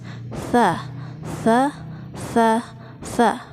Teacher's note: Kalau sa itu di ujung lidah bertemu dengan ujung gigi seri atas.